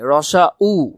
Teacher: পশ্চাৎ মানে রসা উচ্চারণ করার সময় জিহ্বা পেছনে চলে যায় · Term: পশ্চাৎ সরধ্বনি